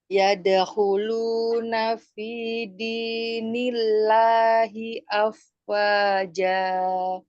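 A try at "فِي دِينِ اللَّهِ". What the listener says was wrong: Masih jangan kayak dinaber. Kalau kita baca nila itu kan dinaber, ditekan ya, ditinggikan. Jajar aja. Fi dinillahi. Iya, jadi jangan di nil gitu ya. Kerasa nggak di nil gitu? Kerasa tinggi kan. Nah, maksudnya tahu bedanya ya. Yang saya contohkan dengan yang Umi baca. Maksudnya jelas bedanya. bedanya apanya gitu ya. Bedanya ya. Nah, Umi kan bacanya nil. Itu dinaber namanya.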